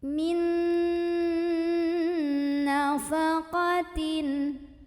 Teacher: nun pertama lebur dengan nun kedua sambil dengung. Jadi di sini kita tahan bunyi an-nya. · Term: idgham bi gunnah